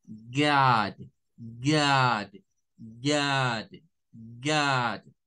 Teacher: no es una A, es una mezcla entre una A con forma de O